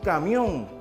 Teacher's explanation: al pronunciarse en una sola sílaba forma un diptongo o sea la unión de dos vocales · lo pronunciamos de una sola vez y aquí formamos nosotros un diptongo